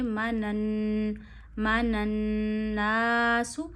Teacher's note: نون پہ تشدید ہے، نون کی آواز ناک میں لے جائیے، ایک انگلی جتنی ٹھہرائیے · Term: نون مشدد کا غنہ